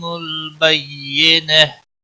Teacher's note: بینہ گول تا ہا میں بدل جائے گی، وقف بالابدال ہوگا